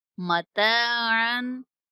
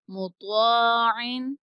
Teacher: اور الف ساتھ جو لگا ہوا ہے یہ تا کے ساتھ باریک پڑا جائے گا اور طا کے ساتھ پر پڑا جائے گا